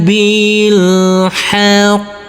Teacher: huruf qof bertasdid maka harus kita tekan, kita tahan dulu baru kita pantulkan. Karena huruf qof termasuk bacaan qalqalah.